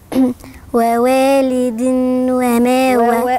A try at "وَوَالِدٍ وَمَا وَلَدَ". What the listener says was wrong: لا، ما بنطقش نون، التنوين هنا ورا حرف من حروف الإدغام، حروف الإدغام اللي مجموعة في كلمة يرملون، خمسة منهم لما باجي أضغمهم بغنة، واتنين منهم لما باجي أضغمهم بدون غنة، يعني واحد إدغام بغنة والتاني إدغام بدون غنة.